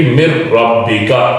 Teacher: مر ربک، یہاں نون ہے، نون ساکن ہے، یعنی نون پر جزم ہے اور آگے را آ گیا ہے، تو نون کی آواز ختم ہو جائے گی، را میں تبدیل ہو جائے گی، را کے اندر شامل ہو جائے گی، مر ربک۔ اسی طرح نون کے اگلے جو الفاظ ہیں من ماء، من ماء، یعنی نون کے بعد، نون ساکن کے بعد میم آ گیا تو نون کی آواز میم میں شامل ہو گئی۔